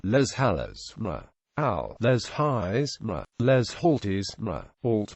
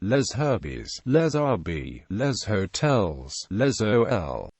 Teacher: This sound no longer exists in standard modern French. However, a Germanic H usually disallows liaison